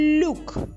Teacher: Ми чуємо начебто у але ж тут заховалася Наша буква ю яка поділилася м'якістю